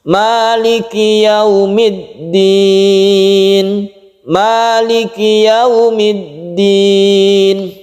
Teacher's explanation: ma-nya ini cukup satu alif saja. Maliki yaumiddin, tidak perlu terlalu panjang